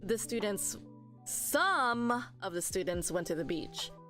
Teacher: when I say some that's a stress too because I'm emphasizing it